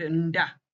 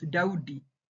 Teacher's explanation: the plain da da without the pre-nasalized, you know, sound appears only in borrowed words such as Dawudi